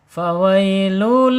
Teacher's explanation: ujung gigi seri atas menyentuh perut bibir bawah